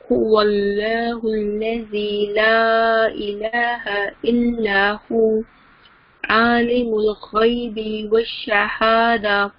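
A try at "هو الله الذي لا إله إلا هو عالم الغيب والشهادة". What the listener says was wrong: बी को भी आपने थोड़ा सा लंबा किया है, उसमें वो टच आ जाता है जैसे हरूफ मद्दा है बाना, वो नहीं है यहाँ पे, यहाँ नहीं है बल्कि आलिमुल गैबी वश्शहादा, गैब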